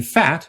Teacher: There was E as in feet, with a high front tongue position, E as in dead, with a slightly lower front tongue position, A as in fat, with an even lower front tongue position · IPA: [æ]